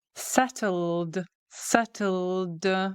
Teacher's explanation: with a D sound because of the L. We are engaging our vocal cords.